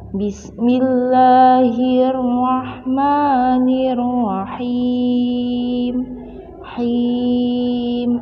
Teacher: mad arid lisukun panjang bacaannya adalah 6 harokat